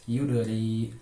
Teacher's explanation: hukum tajwidnya itu qalqalah sugro. dipantulkan dengan jelas.